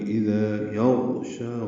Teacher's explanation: اذا یغشا غین پر ہے، موٹا کریں گے غین کو اور اس پہ اظہار ہوگا